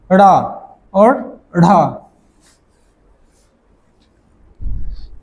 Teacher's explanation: ऊपर और क्षिप्त मतलब नीचे जब इसका उच्चारण करते हैं तो हमारी जीहा जो है पहले ऊपर जाती है और फिर झटके के साथ नीचे आती है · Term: उत्क्षिप्त